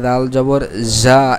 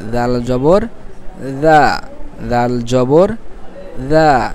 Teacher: জিহ্বার আগা সামনের উপরের 2 দাঁতের আগার সঙ্গে লাগাইয়ে দাল, হ্যাঁ, দাল, দাল জবর দা, দাল জবর দা।